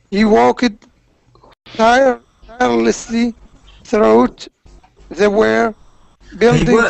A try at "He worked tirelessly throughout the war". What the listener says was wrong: He worked. So in this word "worked," you don't say "ed" at the end. Just he worked tirelessly throughout the war. War sounds like horse. So he worked tirelessly throughout the war.